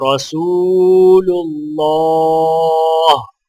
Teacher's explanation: محمد رسول اللہ، را کے اوپر زبر ہونے کی وجہ سے را موٹی پڑھی جائے گی، اور اللہ کے لام کو بھی موٹا پڑھا جائے گا، اور لام کے اوپر کھڑا زبر ہونے کی وجہ سے ایک الف کے برابر کھینچیں گے